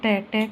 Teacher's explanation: तो ट होता है अल्पप्राण। अल्पप्राण व्यंजन होता है।